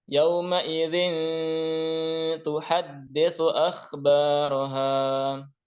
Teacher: Nah, di sini yauma idzin kasratain bertemu dengan tuhadditsu, bertemu dengan huruf ta. Jadi dibaca dengan ikhfa. Dibaca dengan samar-samar.